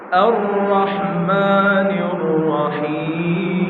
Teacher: মুখ যাতে না গোল হয়। র উচ্চারণ করার সময় মুখ স্বাভাবিক থাকবে এবং মোটা হবে।